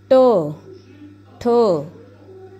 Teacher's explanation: मूर्धन्य ट वर्ग, जब हम बोलेंगे, ट वर्ग का उच्चारण करेंगे, तो जीभ जो हमारी तालु के जो थोड़ा आगे भाग होता है, दांतों के ऊपर और तालु के आगे, उसको टच करेगी।